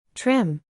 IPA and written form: trɪm (Trim)